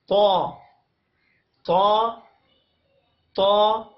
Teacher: اگلا حرف ہمارے پاس آتا ہے طا۔ طا کے لیے زبان کی نوک کو ثنائے علیہ کی جڑ کے ساتھ لگانا ہے اور زبان کے پچھلے حصے کو تالو کی طرف بلند کرنا ہے